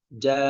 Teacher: untuk hamzah sakinah, hamzah yang pakai harakat sukun, itulah dengan menutup pita suara